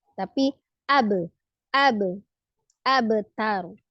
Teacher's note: kolkolahnya kecil, tipis, sugro saja ya